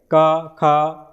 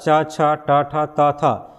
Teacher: जैसे आप जो उच्चारण करेंगे क ख, यानी पहला और दूसरा च छ ट ठ त थ, तो घोष में क्या था गले में कंपन हो रहा था, इसमें क्या आवाज गति से क्या हो रहा है वायु बाहर निकल जा रही है, गले में उस तरह से कंपन नहीं हो रही है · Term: अघोष